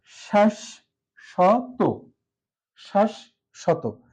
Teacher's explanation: মাঝে বর্ণের সাথে ব ফলা থাকার কারণে মাঝের যে তালবসটা আছে এটা দুইবার উচ্চারিত হচ্ছে